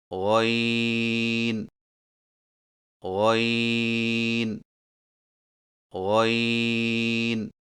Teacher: غین کی ادائیگی میں زبان کی جڑ کو تالو کی طرف بلند کرتے ہوئے موٹی آواز میں پڑھیں، یعنی غین غین غین۔